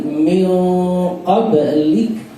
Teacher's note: Contoh ketika mengucapkan min qablik itu nun mati ketemu ke qaf, qaf sifatnya tebal, maka nun ketika didengungkan langsung dia menuju ke tebal